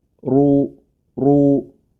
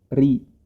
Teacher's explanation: Huruf ro yang berharokat dhammah ya, ini tebal dia dibacanya. Ru, ro, kecuali kalau berharokat kasroh, ri, ya.